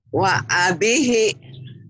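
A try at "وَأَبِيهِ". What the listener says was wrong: B-nya panjang. Wa abihi.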